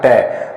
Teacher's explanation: ट का उच्चारण करते समय जीवा दांतों के स्पर्श न करके कहां जाती है? ऊपर, मूर्धा को स्पर्श करती है। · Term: मूर्धन्य वर्ण